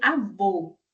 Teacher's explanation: A média alta, a língua é um pouco mais baixa.